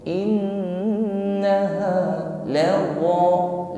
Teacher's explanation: Nun tasydid ada gunnah, maka ditahan dan disempurnakan dengan bunyi dengung. Innaha lawwa, la wa, mengucapkan huruf wa dengan disertai isti'la, terangkatnya lidah bagian pangkal, bukan sekedar laza, laza sebagaimana mengucapkan huruf zai, bukan laza, tidak berdesis.